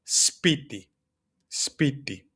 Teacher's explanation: there's no space between them. I'm not saying sipiti or something like that.